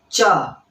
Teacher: च तालु से आ रहा है, यहां ऊपरी तालु से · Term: तालव्य वर्ण